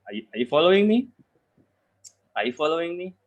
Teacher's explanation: it's gonna take the raising tone because it's yes or no questions